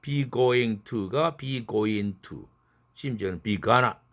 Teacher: 트만 혼자 무성음이니까 날아가 줘야지. 은에 흡수돼야 되지.